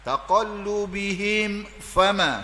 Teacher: Mundak tutup mulut itu hukum dia izhar syafawi. Izhar ni baca dengan jelas terang tanpa dengung, berkait dengan bibir, hukum bibir min mati.